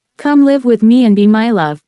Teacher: iambic tetrameter four feet of one unstressed syllable followed by one stressed syllable